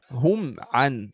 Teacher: In all three positions, we had to do Ithhar Shafawi, just pronouncing the meem clear, with no ghunnah